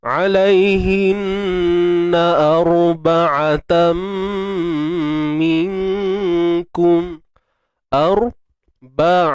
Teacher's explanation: Untuk ra mati. Ra mati sebelumnya baris atas, kita kena tebalkan dia. Okey. Jangan muncul bibir. Angkat pangkal lidah.